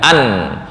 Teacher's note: Nun sukun ujung lidah, an.